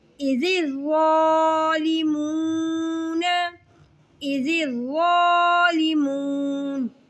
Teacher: زال کو باریک اور نرمی سے، ظا کو موٹا کر کے پڑھیں گے